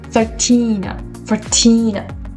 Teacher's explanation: when you have teen, like 19, 13, the stress part is on the second syllable